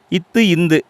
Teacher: இந்த 2 எழுத்துக்களும் நாக்குடைய நுனி மேல்வாய் பல்லின் அடியை தொடுவதால் உருவாகிறது.